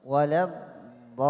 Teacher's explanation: هذه الضاد مضمومة وليس الضاد فتحة. إذا لا نقرأ هكذا ضم الشفتين، لا نقول ولا ضو، هذه خطأ، هذه صوت الضمة